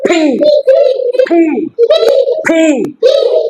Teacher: দুইটা ঠোঁট বন্ধ করে জোরে বাতাস বের করো